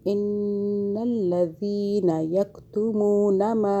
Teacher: یہ پھر نون مشدد گنہ کریں 2 سیکنڈ کا، ان الذین یکتمون ما، نون پہ گنہ کیا، ذال کو سافٹ پڑا، زبان کو ہلکا سا باہر کیا، پھر یہ ادا ہوگا